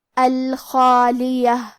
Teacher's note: حرف الخا کی ادائیگی حلق کے اوپر والے حصے سے ہے، خا حروف التفخیم میں سے ہے، لہذا ہمیں خا کو اور اس کے بعد مد الف کو دونوں کو بھاری آواز میں پڑھنا ہے۔